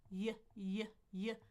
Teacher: My tongue goes down. Y. And actually the back of my tongue is up. So the tip of my tongue is down at my teeth, but the back, or not back, but middle is up on the palate.